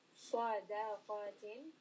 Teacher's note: So switch from heavy to light. Sadaqatin, Sad heavy, Dal light, Qaf heavy